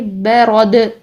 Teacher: ہلانا آپ نے، ٹھیک ہے، والبرد، ب، را موٹا رکھیے، اور دال کو ہم چونکہ ساکن کر رہے ہیں تو ساکن حالت میں اس کو ہلائیے